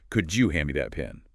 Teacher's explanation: The D and Yi sounds blend into a J sound.